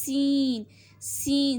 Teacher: سین میں آپ کو سیٹی کی آواز آنی چاہیے. سین کا بھی مخرج وہی ہے جو زا کا ہے یعنی کہ اوپر نیچے والے دونوں دانت آپس میں ملیں گے اور زبان کا کنارہ ان کو ٹچ ہوگا.